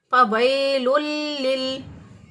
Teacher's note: سین کو باریک پڑھتے ہیں لیکن صاد کو موٹا پڑھیں گے، سیٹی جیسی آواز دونوں میں آئے گی